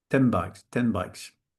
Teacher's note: The N is a sound you make with the tongue behind the teeth. But if they come together, the N starts becoming an M, which is also lips because of the B.